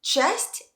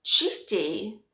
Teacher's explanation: It's A in часть, but I in частей.